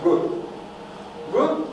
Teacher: То есть она более звонкая. Вроде как К звук, то, что у нас во рту с точки зрения резонанса происходит, как К, похоже, но это делается более звонко.